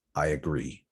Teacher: I, the diphthong, plus schwa